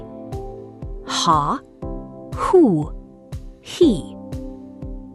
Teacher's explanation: the letter ha is a guttural sound, like clearing your throat